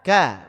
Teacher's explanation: maka tipis infitah plus istifal